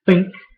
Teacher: So to say think, your throat should not vibrate. But if you say this one, your throat should vibrate. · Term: unvoiced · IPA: /θ/